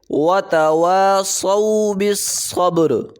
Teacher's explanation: با پہ قلقلہ ہوگا، یہ حروف قلقلہ میں سے ہے